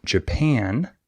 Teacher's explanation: in this word the second syllable is stressed